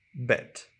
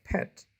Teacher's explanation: The sound b is voiced because it makes the vocal cords vibrate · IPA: /bet/